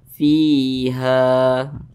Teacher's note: Matobi'i panjangnya 2 harokat atau kira-kira 2 ketukan.